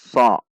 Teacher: Perhatikan, masuk ke shad dan langsung isti'la karena shad memiliki sifat isti'la. So, yaitu menegangkan pangkal lidah. So dibaca tidak dengan membulatkan bibir. Shad fathah bertemu alif 2 ketuk mad tabi'i.